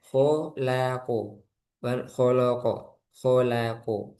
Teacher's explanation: kholaqo ko tebal la tipis o tebal